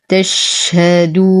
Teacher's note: نعطي الشين الهمسة والرخاوة والتفشي. تش، انتشار الصوت.